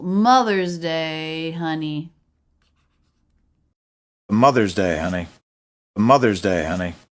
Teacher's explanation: in that two-word phrase that two-word concept Mother's Day we've got stress on the first syllable